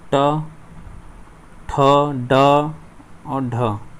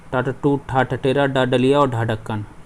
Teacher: हमारा जो ऊपर वाले हमारे दांत हैं उनके अंदर का जो हिस्सा होता है, तालू से आगे का हिस्सा, उसे मूर्धन्य बोलते हैं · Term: मूर्धन्य ध्वनि